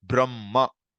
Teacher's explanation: you keep the hakara silent and the following consonant you emphasize